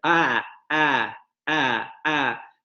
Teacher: con la base de la lengua, es decir, la parte de la raíz, demasiado adelantada en esa vocal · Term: Base de la lengua avanzada